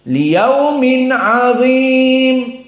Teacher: Maka liyaumin di sini idhar. Dari nunnya bertemu dengan ain. Idhar al-halqi.